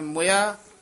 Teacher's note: ਮੋਇਆ ਨਹੀਂ ਕਹਿਣਾ ਮਮੇ ਔਂਕੜ ਨਾਲ ਮੁਇਆ ਛੇਤੀ ਬੋਲਣਾ